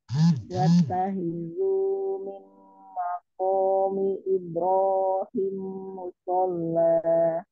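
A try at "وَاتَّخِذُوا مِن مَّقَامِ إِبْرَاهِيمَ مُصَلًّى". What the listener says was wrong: Huruf ba yang sukun pantulkan dulu, jadi jangan ibro tapi ibe. Ibrahim musalla.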